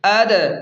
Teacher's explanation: دال حروف قلقلہ میں ہے، اس لیے یہاں جھٹکا دیں گے